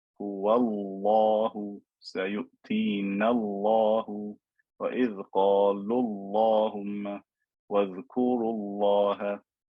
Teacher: Because there is a dhamma or a fatha before it, the word Allah is fat.